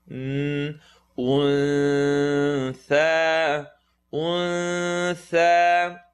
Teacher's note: Tha is the tip of the tongue at the end of the top teeth